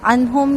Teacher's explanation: نون ساکن کے بعد ہا ہے، اظہار ہوگا